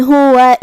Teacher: ہا پہ پیش ہے اور واو پہ زبر ہے، تو یہ دونوں حرکات کا دھیان رہے، ہم دونوں کو ظاہر کریں گے